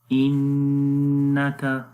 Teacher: نون کے اوپر شد ہے اس وجہ سے غنہ کریں گے